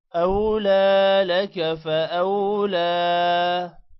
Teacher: لا کو لمبا کریں گے کھڑی زبر کی وجہ سے